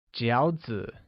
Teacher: which is pronounced with a falling rising tone